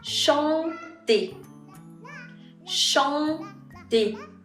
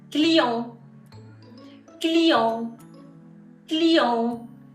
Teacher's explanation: La segunda nasal en francés es mucho más abierta, la bouche beaucoup plus ouverte, ¿ok? Mucho más abierta que la primera nasal que era un.